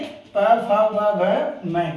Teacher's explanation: प, फ, ब, भ, मैं, ये 5 वर्ण क्या है, ओष्ठ से यानी ओष्ठों से उच्चारित होते हैं